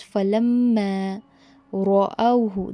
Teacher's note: Pause to put a pressure and effort on the meme mushaddad, that is meme tajdeed, for a second or two, and then go ahead.